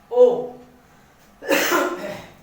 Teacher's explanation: तो ये कैसा हो गया, कंठोष्ठ्य। कंठ के साथ साथ होठों से बोला जाता है ओ